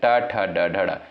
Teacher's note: ट, ठ, ड, ढ, ड इनका उच्चारण साथियों कहां से होता है? मूर्धा से होता है।